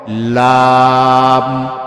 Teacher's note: জিহ্বার আগার কিনারা তার বরাবর উপরের দাঁতের মাড়ির সাথে লাগাইয়া একটি হরফ